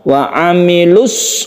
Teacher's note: kalau Mad Thobi'i itu bertemu dengan Al maka Mad thobi tersebut menjadi tidak panjang jadi membacanya langsung wa amilus langsung tasyid shod di mana tajwid